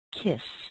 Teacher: But words like, oh, let's say kiss, K-I-S-S, kiss. You notice that the S doesn't use your voice.